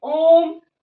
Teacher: इसको चिन्ह कहते हैं पलूत का। जैसे ओम, ओम को हम ह्रस्व से लगभग 3 गुना समय लेके बोलते हैं।